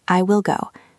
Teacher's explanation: Will usually carries a slightly higher, shorter pitch. It is sharp.